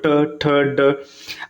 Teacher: है देखिए जब मुर्धन्य व्यंजन का उच्चारण किया जाता है तो जो जीभ होता है ये मुर्धा मुर्धा मतलब तालू के बीच का ऊपर वाला जो कठोर भाग होता है उसको स्पर्श करता है